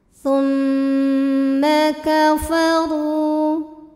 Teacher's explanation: Sebab mimnya bertasydid. Cara bacanya dengung. Jadi bunyi M tahan sampai ada suara masuk hidung. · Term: gunnah musyaddadah